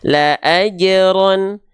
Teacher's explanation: pantulkan 0 harokat, nggak ditahan kan, nggak dipanjangkan. Jadi pantul 0 harokat qalqalah.